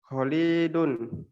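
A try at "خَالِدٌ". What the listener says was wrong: Nah, panjang pendeknya keliru.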